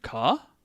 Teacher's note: adding the particle ka with a rising intonation, ka, turns the sentence into a question. So you take the entire sentence and we just questionify it with that ka at the end.